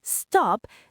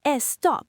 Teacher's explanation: they add a vowel to the front and say estop.